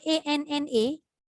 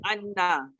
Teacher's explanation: Nun sabdu tu dia memang lekat lidah kat langit.